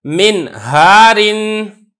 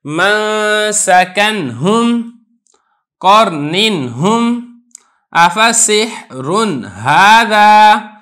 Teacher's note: जहां पर आगे हा है उससे पहले चाहे वो नून साकिन है, नून तनवीन है, उसको मैंने खूब जाहिर करके पढ़ा है और मैंने गुन्ना भी नहीं किया है